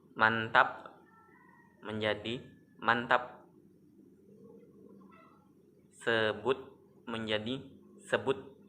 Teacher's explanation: suatu bunyi hambatan letup dalam bahasa Indonesia jika berada pada pengunci kata, proses letupannya dilepaskan atau dihilangkan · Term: Lepas tajam